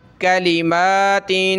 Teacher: देखें यहाँ तनवीन है, दो ज़ेर, आगे यहाँ हुरूफ़ हल्की नहीं है, हुरूफ़ हल्की 6 होते हैं, उनमें फ़ा नहीं है, तो यहाँ हमने तनवीन का इख्फ़ा करना है, यानी नाक में आवाज़ पैदा करेंगे